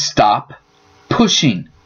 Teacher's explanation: It sounds more like stop pushing. The second P and the space between words disappears. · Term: linking